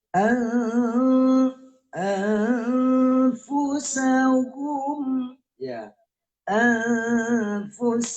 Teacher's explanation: nun mati ketemu dengan fah. Jadi bacaannya adalah harus disamar. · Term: ikhfa